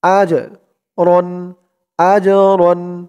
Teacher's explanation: জিমটা কলকলার হরফ, ধাক্কা দিয়ে পড়তে হবে